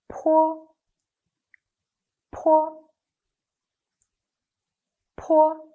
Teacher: Different from bo, this one is an aspirated voiceless bilabial sound. The position of articulation is the same as that of bo, but there is air that released forcibly with a puff. When you pronounce it, it sounds like po of policy.